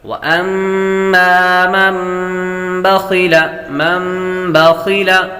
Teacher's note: نون ساکن کے بعد با آ جائے تو نون ساکن کو میم سے بدل کر اخفا کر کے غنہ کر کے پڑھیں گے. اقلاب کا قاعدہ لگے گا، میم پر بھی غنہ ہوگا اور یہاں نون پر بھی غنہ ہوگا.